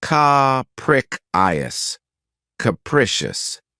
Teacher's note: this word has three syllables with the stress on the second syllable keep in mind that the first syllable has that schah sound